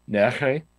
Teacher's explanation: a sound that's pronounced using the uvula, and it's a fricative, meaning that there's raspy, there's this raspiness associated with it. So, for example, the word for yesterday is nehe, and it's this sound that's kind of similar to, like, in Russian, the ch, yeah, but it's pronounced further back. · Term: voiced uvular fricative